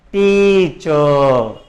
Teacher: అంటే టీచర్ అనే పదంలో 2 సిలబల్స్ ఉన్నాయి. సో ఆ 2 సిలబల్స్లో సెకండ్ సిలబల్ కంటే ఫస్ట్ సిలబల్ని బిగ్గరగా పలుకుతాం. · చ అనేది సెకండ్ సిలబుల్, టీ అనేది ఫస్ట్ సిలబుల్. సో చ కంటే టీ అనేది ఎక్కువగా స్ట్రెస్ చేసి పలుకుతున్నాం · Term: స్ట్రెస్డ్ లేదా యాక్సెంటెడ్ సిలబల్, స్ట్రెస్డ్ సిలబల్